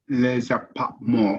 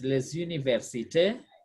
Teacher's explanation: S always followed by a vowel become the Z. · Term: liaison